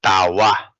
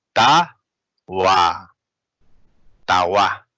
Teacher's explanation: it is no longer pronounced pa, but it is actually pronounced wa. All right, it is pronounced wa.